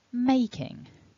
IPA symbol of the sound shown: ŋ